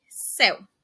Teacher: Esqueceu, esqueceu. E em céu, a letra E é pronunciada com um som aberto, ou seja, tem até mesmo a questão de uma tonacidade maior, principalmente por conta do acento.